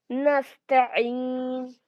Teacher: सीन में सीटी की आवाज आएगी